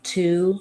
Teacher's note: at the start of words in English the T sound needs to have that burst of air coming out